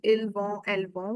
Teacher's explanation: we will not pronounce t anyhow, and on will give you the on sound